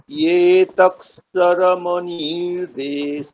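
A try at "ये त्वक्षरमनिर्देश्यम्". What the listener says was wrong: তক্ষর হয়ে যাচ্ছে, তক্ষর নয় ত্বক্ষর, ত্বা তয়ে বয়ে।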